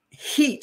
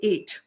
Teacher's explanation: Jamaicans put H's before vowels and they eliminate the H's when it's in the word